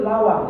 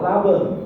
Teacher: Orang Madura kesulitan mengucapkan huruf W, bergeser menjadi B. Huruf B dan W itu sama-sama huruf bibir. Kalau bahasa linguistiknya bilabia.